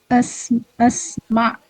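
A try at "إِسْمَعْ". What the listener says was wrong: Isma. Alifnya kasrah. Isma.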